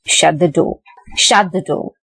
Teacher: Shut is in the rising, that is, a shut is in the high pitch, and from high pitch you are moving to low pitch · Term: falling intonation